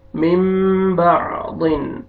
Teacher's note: نون ساکن کے بعد با آ رہا ہے، اس نون کو آپ نے میم میں چینج کیے